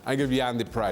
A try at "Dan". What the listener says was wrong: Why are you giving Jan the prize? No, you got the. There's this D in, not a J. It's Dan, not Jan.